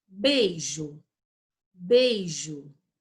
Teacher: O I não é uma sílaba, uma vogal forte, então ela é uma semivogal e ela vai continuar junto com o E.